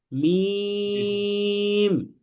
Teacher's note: যখন আপনি মিম বলছেন তখন দুই ঠোঁটের শুকনা অংশটা মিলছে। তাহলে বলেন মিম।